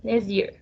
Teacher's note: So the word will the letter T is lost because we only pronounce next year